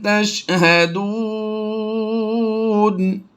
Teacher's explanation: یہاں پر بھی دیکھیے واو مدہ ہے، واو ساکن سے پہلے پیش ہو تو واو مدہ ہوتا ہے، ٹھیک ہے۔ تو یہاں پر واو مدہ کے بعد سکون عارضی یعنی زبر کو ہم نے پھر وقف کی وجہ سے جزم کے ساتھ کنورٹ کیا تو یہ مد عارض بن گئی